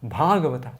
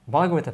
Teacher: first long A in the first syllable of Bhagavata, means connected to Bhagavan